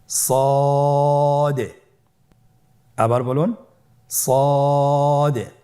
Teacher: জিহ্বার আগা সামনের নিচের দুই দাঁতের পেট ও আগার সঙ্গে লাগিয়ে উচ্চারিত হয়। · সদ হরফটি পর হরফ। মোটা হরফ উচ্চারণ ক্ষেত্রে মোটা করে পড়তে হবে এবং উচ্চারণ করার সময় তিন আলিফ টেনে পড়তে হবে